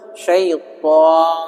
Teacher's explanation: To-nya itu tebal, syaiton, jangan jadi syaiton.